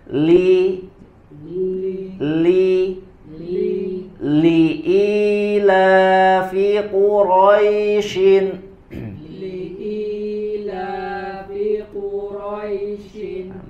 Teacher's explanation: huruf lam berharakat kasrah sama ya pada hakikatnya hukum asalnya adalah dibaca dengan istifal dibaca dengan tipis